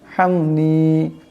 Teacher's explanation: বড় হাস আওয়াজটা গলা থেকে আনতে হবে